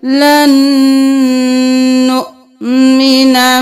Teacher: حمزہ کے اوپر جزم ہے جھٹکا دیں گے